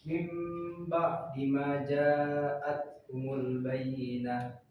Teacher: mengubah suara nun mati atau tanwin menjadi mim ketika bertemu dengan ba. Contohnya misalkan dalam Al-Quran itu dalam surah Al-Bayyinah, mim ba'di ma ja'atkumul bayyinah, itu ada huruf nun mati bertemu dengan huruf ba, maka suara nunnya diganti menjadi mim. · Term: iqlab